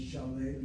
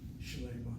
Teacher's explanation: The kamatz now reduces to a shvana.